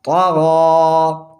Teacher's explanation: 2 second کھینچ کے پڑھیں گے کھڑی زبر